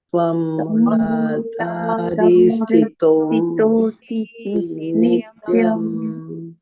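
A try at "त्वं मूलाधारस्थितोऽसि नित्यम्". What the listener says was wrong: I hear E. There's no E. Tvam Mooladharasthitosi Nityam.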